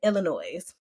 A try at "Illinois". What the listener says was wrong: Don't pronounce that S. Don't pronounce that S. Illinois. That's incorrect. don't put that S on there. It don't belong.